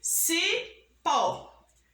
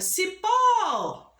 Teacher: vamos ver que o pó pronunciamos com mais força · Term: oxítona